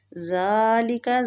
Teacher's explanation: زال کھڑی زبر کی وجہ سے کھینچیں گے